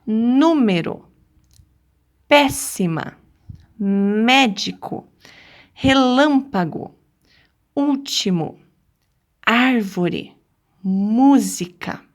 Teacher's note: se a sílaba tônica for a antepenúltima ela é uma palavra proparoxítona